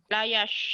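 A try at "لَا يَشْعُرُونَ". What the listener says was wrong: Sinnya dibuka lebar, bukan dimonyongin.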